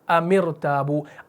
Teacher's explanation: اس ام کے میم ساکن کو ہم میم مکسور بنا دیتے ہیں, کسرہ لگا دیتے ہیں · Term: عارضی کسرہ